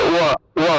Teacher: ঠোঁট না লাগিয়ে ব উচ্চারণের মতো ওয়া উচ্চারণ করতে হবে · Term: অন্তস্থ ব